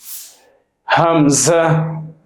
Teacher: হামজা একই মাখরাজ থেকে উচ্চারিত হয় হলকের শুরু হইতে অথবা কণ্ঠনালীর শুরু হইতে।